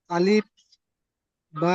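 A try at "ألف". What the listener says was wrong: আলিফ পড়বেন না, শেষে প উচ্চারণ করবেন না, শেষে ফ উচ্চারণ করবেন। দেখেন এখানে বাংলাতেও লেখা আছে আলিফ। আমি বলছি যে বাটাকে আপনি একটু টান দিয়ে পড়েন, এক আলিফ পরিমাণ টান দিয়ে পড়েন, বা একটু টান দিয়ে ধরে পড়েন।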